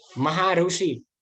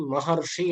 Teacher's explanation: र रहे यानी मतलब कि अब जब हम बोले तो हमें ऐसा लगना चाहिए कि हम र इसके बीच में महर्षि हम बोल रहे हैं, तो र इसमें हम बोल सकते हैं। महाऋषि ऐसा बोलिए तो र तो नहीं, रू आएगा, लेकिन महर्षि हम ऐसा बोलेंगे तो उसके अंदर हमें र सुनाई देगा। और के अंदर जो र है वो सुनाई देगा, तो वो रेफ बन जाता है।